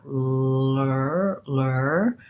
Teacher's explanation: And if you're looking at the ends of lurly, the lur syllable, you may find that that's easier because I'm going from the L position, and just pulling my tongue back, lur, bracing the outsides of the upper tongue against the teeth. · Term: back R